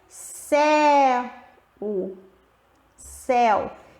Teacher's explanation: o E é a vogal, é mais forte, e a semivogal é o U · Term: ditongo decrescente